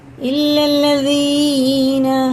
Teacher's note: زبان کی نوک اوپر والے دانتوں کے کنارے سے لگا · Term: دال